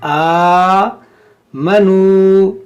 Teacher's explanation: یہاں پر دیکھیں یہ الف پر کھڑا زبر ہے، تو جب بھی الف پر کوئی حرکت آ جائے، زبر زیر پیش یا جزم یا کھڑا زبر، تو یہ الف سے حمزہ بن جاتا ہے، تو اس کو ہم حمزہ پڑھیں گے، حمزہ کھڑا زبر آ، ٹھیک ہے، کھینچیں گے، کھڑا زبر کو ایک الف کے برابر کھینچتے ہیں